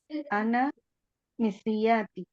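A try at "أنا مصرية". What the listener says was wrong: Disukunkan saja. Ana misriyah.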